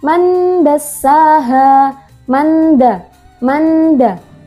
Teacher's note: Nun sukun bertemu dengan huruf dal dibaca samar dan berdengung. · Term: ikhfa hakiki